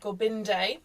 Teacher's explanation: When we chant H, um, we engage the naval and on the R, you connect the tip of the tongue to the roof of the mouth. So it sounds a bit like H A D.